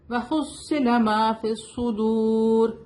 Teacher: رو یہاں پہ ہیوی ہوگا کیونکہ وقف کے دوران ہم رکیں گے تو یہ زیر ہٹ جائے گا. اوپر جزم آ جائے گا.